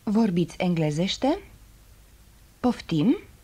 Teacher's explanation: The simplest way of asking something in Romanian is to raise the tone of your voice on the last syllable of the sentence.